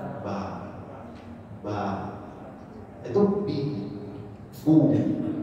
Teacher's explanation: sifatnya Ba Itu sama sekali tidak ada Hames atau desis